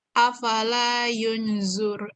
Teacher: Tebal, dengungnya panjang 3 harakat.